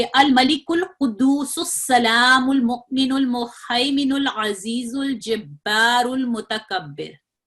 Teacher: यानी ये वो अलिफ हैं कि जब आप इनको मिला के पढ़ेंगे, पूरी आयत को तसलसल से मिला के पढ़ेंगे, वस्ल में पढ़ेंगे, तो फिर ये अलिफ अपनी कोई हैसियत नहीं रखते, ये अलिफ गिर जाते हैं, इनको नहीं पढ़ा जाता। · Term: हमजतुल वस्ल